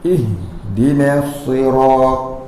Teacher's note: Makraj ha tu di dada. Kalau baca jadi ha. Dia gegar kat dada.